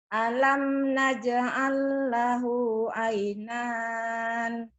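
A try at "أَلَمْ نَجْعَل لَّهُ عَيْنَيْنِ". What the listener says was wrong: Ainain. Bukan ainan. Ainan. Ainain. Ada linnya itu.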